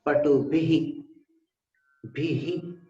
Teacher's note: ह के बाद हल्की सी ई की ध्वनि आएगी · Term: विसर्ग